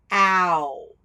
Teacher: when you say it you can notice how your mouth moves and you're actually saying two separate sounds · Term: diphthong, vowel diphthong